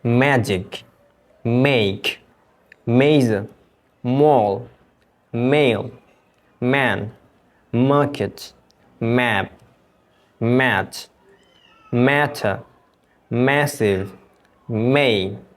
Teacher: দুটো ঠোঁটকে একসাথে লাগিয়ে এই এম সাউন্ডটিকে উচ্চারণ করবে এবং এটি একটি নেজাল সাউন্ড, এটি নাক দিয়ে তোমাকে উচ্চারণ করতে হবে